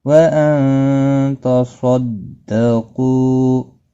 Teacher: نون ساکن کے بعد حروف اخفا کا تا، اخفا حقیقی ہوگا۔ صاد مستعلیہ ہے، پر پڑا جائے گا۔